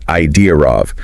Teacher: It's super common to hear an R sound there, making it idea of.